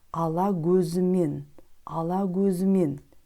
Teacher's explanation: В слове «көзімен» звук «к» произносится как «г», потому что перед звуком «к», обратите внимание, стоит гласная буква «а»